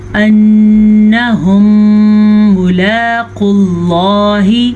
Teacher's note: قاف کو پور پڑھیں گے اور لفظ اللہ کو بھی پور پڑھیں گے